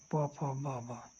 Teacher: हिंदी में ब ध्वनि को किससे बोला जाता है ओट से बोला जाता है